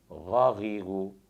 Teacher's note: مخرج کے اعتبار سے اس کو حلقیہ کہتے ہیں۔ غین کا مخرج ہے ادنی حلق، یعنی حلق کا وہ حصہ جو منہ کی جانب ہے جسے ابتدائی حلق بھی کہتے ہیں، یہاں سے غین ادا ہوتا ہے اور مخرج کے اعتبار سے حلقیہ کہلاتا ہے، جیسے غین زبر غا، غین زیر غی، غین پیش غو، غا غی غو۔